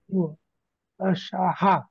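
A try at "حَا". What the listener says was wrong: একটু টেনে পড়েন, হা লেটারটার নাম কি? 1 সেকেন্ড লং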